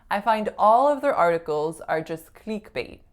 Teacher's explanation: So instead of saying click with a lax I vowel, I said click with a pure E vowel.